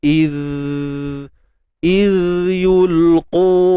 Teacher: zal ni bersifat suara yang mengalir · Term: rakhawah